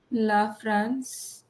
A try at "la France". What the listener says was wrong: It's not ला फ्रांस, it's आ plus n becomes nasal with a vowel. nasal no sound. France, France. आर को भी पढ़ना है. France, France. How do you say frank? So frank, franc. R को कैसे छोड़ सकते हैं? Franc, France, la, France. If I say France, ro. So it's ons, nasal.